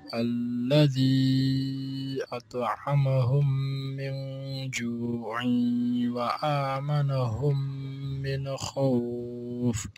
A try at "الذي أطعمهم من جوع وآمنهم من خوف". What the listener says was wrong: So الذي أطعمهم and not هم. هو, you don't do the proper rounding of the lips or the proper dhamma. So circle your lips more and say هو هم. أطعمهم من جوع. So when you measure the tanween into waw, you have to do waw with your mouth. Round your lips and say عيون. عيون wa, it's not just gunna sound. عيون وآمنهم من خوف, not من خوف.